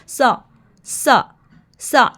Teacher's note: ना ही हमने सा पढ़ते हुए सीटी की आवाज़ देनी है, ना सीटी की साउंड देनी है